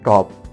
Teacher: T, voiceless, alveolar, plosive, as in top